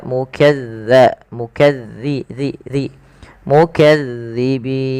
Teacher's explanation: huruf lam hati-hati teman-teman Bil melafalkan huruf Za Maaf huruf dalal Jangan dibaca dengan Zai ya Jangan dibaca mukazzibin tapi dia mukadza